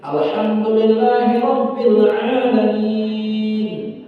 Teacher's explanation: ha yang terdapat di awal itu ha kecil, ha pedas. Maka akan ditegaskan dikit